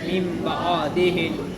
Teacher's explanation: نون ساکن کے بعد با آ گیا، تو اب ہم یہاں پر نون کو میم سے بدل کر کے پھیر دیں گے، اس کو نون کو میم سے بدل دیں گے اور ہم من بعدہم پڑھیں گے. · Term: اقلاب